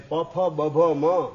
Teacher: ઓસ્ટીય એટલે કે હોઠથી ઉત્પન્ન થનારા બે હોઠ ભેગા થાય તો પ્રગટ થાય એવા વર્ણ એને કહેવાય ઓષ્ટિય